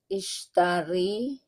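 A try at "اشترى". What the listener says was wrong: Ishtara. Ini nggak ada titiknya ya.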